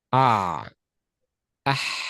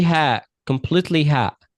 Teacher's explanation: close the vocal cords a little. Okay? Ah. Ah. Okay? If you didn't close the vocal cords, it will be ha, completely ha.